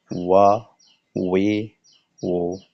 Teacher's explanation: ওয়া উচ্চারণের সময় দুই ঠোঁট গোল হবে, মাঝখানে খালি হবে, চোখা হবে দুই ঠোঁট। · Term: ওয়াও